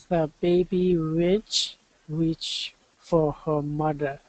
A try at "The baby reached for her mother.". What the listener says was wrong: Get that TH on mother.